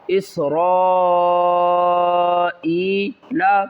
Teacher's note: وَإِذْ أَخَذْنَا مِيثَاقَ بَنِي إِسْرَائِيلَ وَإِذْ أَخَذْنَا مِيثَاقَ بَنِي إِسْرَائِيلَ، با زبر با، نون یا مد زیر نی، بنی حمزہ سین زیر اس، را الف مد زبر را، بڑی مد ہے، 3 سے 5 الف کی مقدار کھینچ کر پڑھیں گے